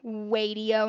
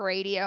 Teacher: Swapping different sounds like wadio instead of radio. Maybe they're making it a W instead of an R.